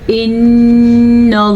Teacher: नून के ऊपर गुन्ना होगा क्योंकि नून पे शद है। जब भी नून पे शद हो या मीम पे शद हो तो गुन्ना लाजमी है।